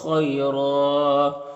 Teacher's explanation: خا حروف مستعلیہ میں سے پر پڑھیں گے، یا لین ہے یہاں پر، اسے نرم آواز کے ساتھ جلد پڑھیں گے، اور را کے اوپر 2 زبر ہے، یہاں پر وقف کریں گے تو 1 زبر کے ساتھ الف پڑھیں گے اور را کو پر پڑھیں گے